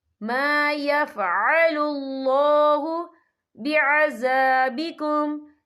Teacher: یہاں اللہ کا نام پر پڑھا جائے گا کیونکہ اللہ کے نام سے پہلے پیش ہے